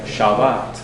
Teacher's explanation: that first syllable is shorter the second syllable is longer